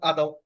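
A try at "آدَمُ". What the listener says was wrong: জি এটা এক আলিফ টান দিয়ে পড়তে হবে আদামু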